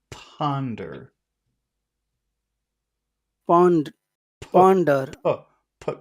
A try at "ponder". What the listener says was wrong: you have to push the air out not eat it